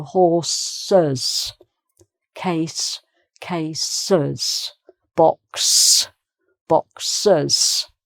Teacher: you have to make an extra syllable because horse ends with an S sound already. The singular ends with an S sound.